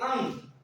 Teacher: और अंग, देखिए अंग, जब आप अंग बोलेंगे तो अंग देखिए नाक से करना। ठीक है, नाक और मुंह दोनों, तो अंग का उच्चारण कहां से होता है, अनुनासिक से होता है।